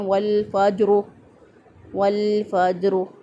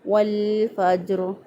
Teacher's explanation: را کی ادائیگی میں ہونٹوں کو گول نہیں کریں گے بلکہ سیدھا رکھتے ہوئے اس کو ادا کریں گے